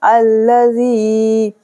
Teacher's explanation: زالیہ زیر زی ہے، 2 سیکنڈ کی کھینچا جائے گا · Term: مد اصلی